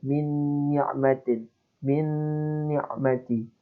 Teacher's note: ini nun dengan nun ada gunnah, maka harus didengungkan